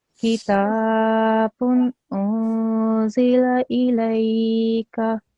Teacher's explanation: Okay, laika, lay needs to also be 2 seconds long. Okay, and your kaf, because it only has a fatha, needs to be 1 second long